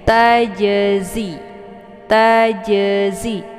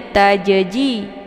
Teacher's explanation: makhraj zai ini keluarnya dari ujung lidah sejajar dengan gigi seri bagian atas